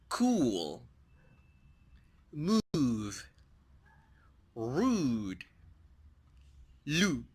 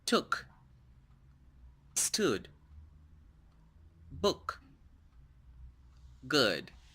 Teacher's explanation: es un sonido tenso, un vowel sound muy tenso, y el otro es es más relajado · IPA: /uw/